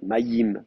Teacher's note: En hébreu massorétique, pour maintenir la diphtongue, on va même mettre une voyelle d'appui, un petit chirek, maïm, comme s'il y avait un petit i.